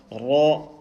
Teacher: This one is ra, letter ra. In ra, we've got to make sure that you hear the trembling sound, the r sound.